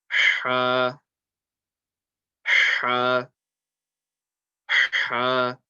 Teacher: the makhraj of this letter, meaning where the sound comes from, is the middle of the throat